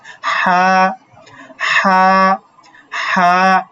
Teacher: হা মানে একদম হা হলকের মাঝখান থেকে উচ্চারণ হবে।